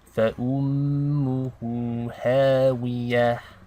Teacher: meme with a shadda. We want to do ghunna for 2 counts.